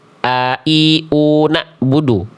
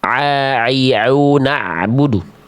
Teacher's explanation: makhraj ya, tempat keluar ain itu dari tengah tenggorokan